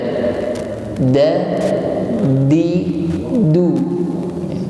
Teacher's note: Tapi kalau kita tidak menggunakan samping lidah, tetapi cuma menggunakan ujung lidah, maka yang keluar adalah bunyi huruf dal.